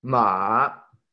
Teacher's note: el tercer tono bajamos el tono y subimos